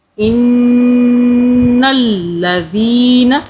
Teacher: ان نون کی 2 مرتبہ آواز بنائیں گے، ان نل لام کی بھی بنائیں گے